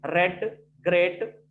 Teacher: our blade of the tongue touches the just above part of the teeth ridge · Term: post-alveolar sound